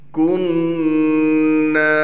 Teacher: کاف کو نون سے ملائیں گے غنہ کے ساتھ، اور نون کے بعد الف ہونے کی وجہ سے نون کو 1 الف کی مقدار کھینچیں گے